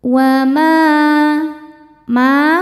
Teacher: Sebab ada alif sebelumnya fathah. Cara bacanya huruf ma dipanjangkan dua harakat. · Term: mad thobi'i zohiri